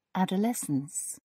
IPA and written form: ˌædəˈlɛsəns (adolescence)